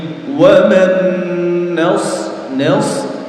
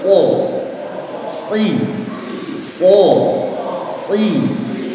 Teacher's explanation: suara shafir itu keluar dari sela-sela antara ujung lidah, ujung gigi seri atas sama ujung gigi seri bawah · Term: sifat shafir